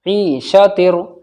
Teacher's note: تنوین کے بعد میں را آ رہا ہے تو ادغام تام ہوگا بغیر غنہ کے